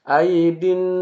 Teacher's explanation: Nun yang bertasdid ini disebut dengan ghunah musyaddadah jadi ditahan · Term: gunnah musyaddadah